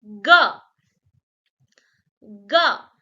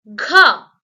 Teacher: if you add that breathe to ga, it will become gha, the fourth consonant.